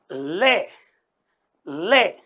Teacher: ले का उच्चारण जो किया जाता है वह जीभ के दोनों तरफ होकर के प्राणवायु को निकाला जाता है